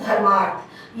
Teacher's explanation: धर्म का अ और अर्थ का अ दोनों मिलके बन गया धर्मार्थ, यानी आ बन गया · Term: दीर्घ संधि